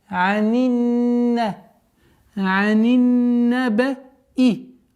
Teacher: С огласовки кясра мы уходим на удвоенный нун.